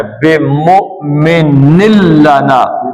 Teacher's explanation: مؤمن لنا نون نہیں پڑھنا بلکہ میم کو لام کے ساتھ پڑھنا ہے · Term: یرملون کا قاعدہ